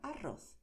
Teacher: De manera natural yo diría arroz, pero existe siempre ese temblor de la lengua, ¿vale? Arroz o también arroz.